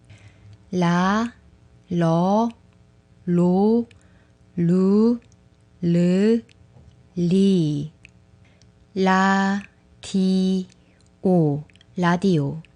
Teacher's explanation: To make this sound, just touch the gum ridge with the tip of your tongue and let the sound go softly. Its sound is similar to l in English.